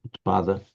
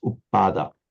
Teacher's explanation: the t of the Sanskrit becomes the double P of Pali